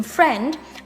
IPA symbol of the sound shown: e